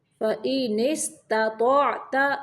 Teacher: پہلا تا جو ہے اس کو باریک پڑھنا ہے، دوسرا تو موٹا